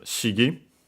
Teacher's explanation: It's a Chinese compound accent on the first syllable in this case